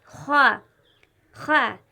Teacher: خا ادا ہوتا ہے حلق سے، اور اس میں موٹی آواز ہوتی ہے